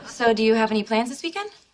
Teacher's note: rising intonation to show it's a question. So, do you have any plans this weekend?